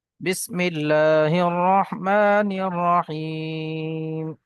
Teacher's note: রহমানির রাহিম মিমের উপর খারা জবর এসছে আমরা একটু টান দিয়ে পড়বো এক আলিফ পরিমাণ আলিফ মাদ্দার মত এখানে ইয়া সাকিনের পূর্বে জের এসছে ইয়া মাদ্দা এক পরিমাণ টান দিয়ে পড়ব